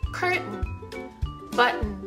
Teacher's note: ある程度決まった綴りによって▁T▁が飲み込まれてしまう▁Glottal▁T